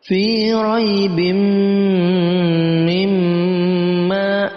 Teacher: Kemudian setelahnya ada mim berharokat tasdid. Ini masuk dengan kategori gunnah musyaddadah, dibaca dengung 2 harokat panjangnya. Fi raibim mimma, ya, dibaca mim, dua-duanya mim berharokat tasdid, kita baca dengan dengung 2 harokat.